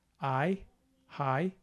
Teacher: the vowel here starts with an A and goes up to an E. I, high, but it's not 2 separate syllables, it's just high, 1 syllable. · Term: diphthong